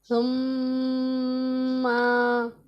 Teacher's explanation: جیسے نون مشدد میں غنہ کرتے ہیں اسی طرح میم مشدد میں بھی غنہ ہوگا